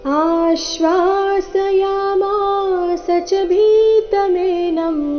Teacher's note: ಆ ಸ್ವರದ ಮೇಲೆ ಆಘಾತ ಆ ದೀರ್ಘ